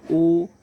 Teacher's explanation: ओ, औ का उच्चारण कंठ और ओष्ठ दोनों से उच्चारण करेंगे, कंठ से भी और ओष्ठ से भी। जैसे उच्चारण करके देखेंगे, ओ कंठ से निकला, फिर ओष्ठ से। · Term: कंठोष्ठम